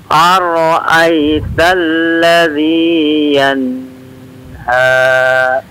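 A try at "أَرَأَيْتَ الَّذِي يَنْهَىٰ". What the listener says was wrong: Iya, yanha, nunnya diizharkan aja Pak ya. Abu Aiman tidak dipanjangkan. Enggak begitu, tapi yanha, yanha langsung.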